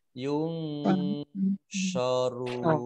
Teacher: nun sukun bertemu dengan huruf shad dibaca samar-samar, namanya ikhfa